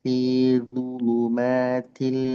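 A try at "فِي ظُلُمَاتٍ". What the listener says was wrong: Ah tipiskan lu. Hati-hati terpengaruh oleh du yang tebal.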